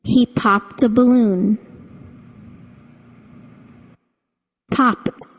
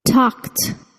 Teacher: the Ed ending to be pronounced as the voiceless t with no vocal chord vibration